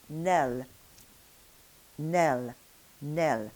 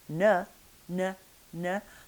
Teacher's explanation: We're going to be pronouncing that N with the tongue tip up against the gum ridge, n, n, n, the tongue curled up. In French we're going to be holding the tip of the tongue down behind the bottom teeth, and we're going to be making the n closure against the curve of the upper teeth.